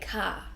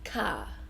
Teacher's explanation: But in Australia, we don't really say the R. We just say car.